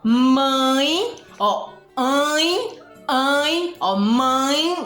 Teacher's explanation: Os nasais, mãe, ó, ó, mãe, você sente o tremorzinho no nariz, a sua voz, quando você vai pronunciar a palavra, sai pela boquinha e pelo nariz